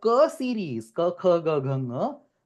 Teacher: the Jivha Mula is actually touching the Kantha